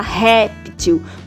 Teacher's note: o acento agudo ele abre o som do é